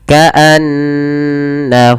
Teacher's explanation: nun bertasydid sebagaimana mim bertasydid, yaitu ada bacaan gunnah ditahan suara n ya.